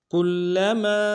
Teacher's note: لام کو تشدید زور دیں گے، میم کے الف مدہ ایک مقدار میں کھینچیں گے۔ نضجت، ضاد کو موٹا ادا کریں گے۔